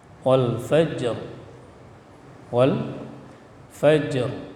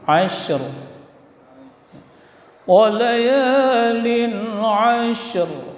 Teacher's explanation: Jadi kalau kita waqaf wal fajr, wal fajr, ada ra yang dimatikan karena waqaf, ada getaran pada makhraj ra, fajr. Jadi sesudah jim qalqalah langsung ra yang dimatikan.